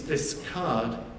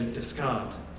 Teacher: the k sound is more heavily aspirated. It's got a larger burst of air accompanying it in the sequence discard compared to discard.